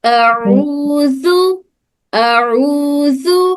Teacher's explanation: رو ہمارے حلق کے نچلے حصے سے ادا ہو رہا, اور عین ہمارے حلق کے درمیانی حصے سے ادا ہوتا